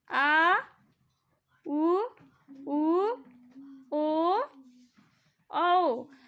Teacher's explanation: तो पश्च स्वर का अर्थ है कि जिन स्वरों के उच्चारण में जीभ के पीछे का हिस्सा उठता है उसे पश्च स्वर कहते हैं